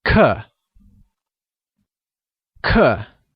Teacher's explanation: pronounced using a falling tone